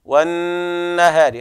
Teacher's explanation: والنهار اللام هنا لام شمسية حكمها الإدغام، والنون حرف أغن مشدد يغن بمقدار حركتين